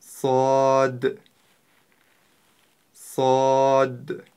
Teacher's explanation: на конце мягкая д и мы как бы прерывисто заканчиваем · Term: буква сад